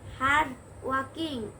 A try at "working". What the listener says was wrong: ওয়াকিং না, এটা হবে ওয়ার্কিং।